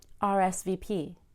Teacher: Link R to S so it sounds like res.